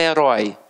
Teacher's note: Ela tem o ditongo aberto, beleza, mas é na última sílaba, é uma oxítona.